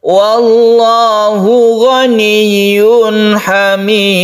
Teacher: ada tanwin bertemu dengan ha, kita baca izhar halqi, jelas dan tidak berdengung. Hamid adalah mad arid lisukun.